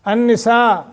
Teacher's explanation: یہاں غنہ کرنا ہے کیونکہ نون مشدد ہے اور سین کے اوپر مد متصل ہے لمبا کرنا ہے